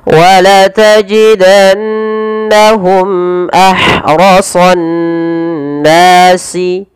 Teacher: Kemudian pada lafal mimati bertemu hamzah ini kita namakan dengan izhar syafawi dan yaitu harus dibaca dengan jelas suara mimnya tanpa ada penahanan